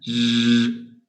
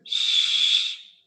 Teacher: It means that the z sound is voiced. S is voiceless.